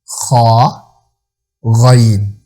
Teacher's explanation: खा और गाइन, ये दोनों हरूफ गले का मुंह की तरफ वाला जो हिस्सा है वहां से दोनों हरूफ अदा होते हैं